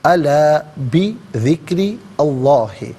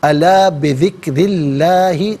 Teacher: قلوبہم بذکر اللہ، یہاں وقف پڑھیں گے تو بذکر اللہ پڑھیں گے، الا بذکر اللہ، یہاں پر بھی را کے نیچے زیر سے اس میں اللہ کی حرف لام کے ساتھ ملائیں گے، درمیان میں سے الف حمزہ کو حذف کیا جائے گا، اور اس میں اللہ کی لام کو یہاں بھی باریک پڑھیں گے کہ ما قبل را کے نیچے زیر ہے